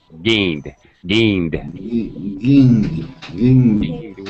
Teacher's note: N, it's a voiced sound, so we go straight to the D sound. No extra syllable.